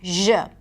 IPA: ʒ